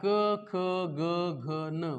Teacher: क ख ग घ न म्हणताना जिभेचा शेंडा कुठं टच होईना झालाय. ना दाताला लागायलाय, ना वर मूर्धेला लागायलाय. · ना दाताला लागायलाय, ना वर मूर्धेला लागायलाय. जिभेचा शेंडा कुठंच नाही, याचा अर्थ त्याचा प्युअर कंठातून उच्चार व्हायलाय.